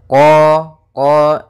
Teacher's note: makhraj daripada huruf q yaitu dari pangkal lidah kita pangkal lidah sehingga huruf qfnya harus dibaca dari pangkalnya supaya lebih jelas pangkal